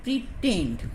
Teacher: first syllable you will make it weak, and the second syllable strong.